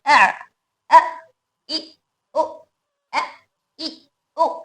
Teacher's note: हमजा में सिफत शिद्दा की वजह से हमजा को अदा करते वक्त में झटका पैदा हो रहा है। कैसे झटका हो रहा है, जैसे अ, इ, उ, अ, इ, उ, सिफत शिद्दा आ रही है इसमें, इसीलिए इसके अंदर सिफत शिद्दा की वजह से आवाज मखरज में रोक रहे, मखरज में रोकने की वजह से इसके अंदर झटका पैदा हो रहा है, अ, इ, उ।